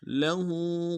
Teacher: लहू में हा के ऊपर खड़ा उल्टा पेश एक इंतजार में खींचेंगे।